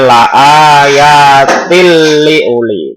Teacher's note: Ini jadi bacanya la ayatil liuli. Jadi kasroh tainnya langsung masuk ke dalam lamnya atau ro-nya. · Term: idgham bila gunnah